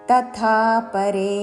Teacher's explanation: తథా ముందు అల్ప ప్రాణత తర్వాత మహాప్రాణాక్షము థా దీర్ఘముతో